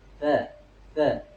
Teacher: Karena ujung lidahnya di dalam. Kalau misalkan ujung lidahnya di luar ya kita keluarkan dikit tsa tsa maka hilang itu suara desisnya. Karena huruf tsa itu tidak memiliki desis.